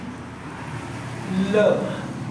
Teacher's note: जीभ और तालु का स्पर्श करते हुए और जो हवा होगी उसके मुख के दोनों बगल से निकलेगा, उसे क्या कहते हैं, पार्श्विक वर्ड।